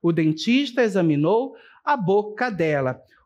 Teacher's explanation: a última sílaba da palavra boca e o pronome, certo, dela formam a palavra cadela na pronúncia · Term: cacofonia